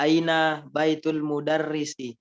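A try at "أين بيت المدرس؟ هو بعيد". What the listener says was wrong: Nah, ini sebenarnya bacanya harus pakai nada tanya. Aina baitul mudarrisi huwa ba'idun.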